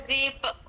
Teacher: qalqalah kubra pada huruf ba